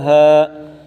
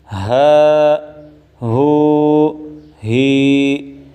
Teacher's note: اس ہا کو سینے سے نکالنا ہے